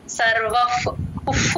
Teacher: వశ కర్మ సర్వ ప్రకృతి జైర్గుణైహి ఇక్కడ సర్వ పక్కన విసర్గ ఎఫ్ సౌండ్ ప ముందు ఎప్పుడు విసర్గ వచ్చిన ఎఫ్ లాగా చెప్తాం